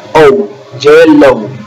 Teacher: Su sonido fonético es como si fuera una U, una O con una U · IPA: /ou/